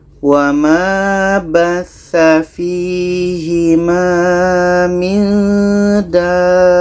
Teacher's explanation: ini ta marbutah kalau berhenti menjadi huruf ha.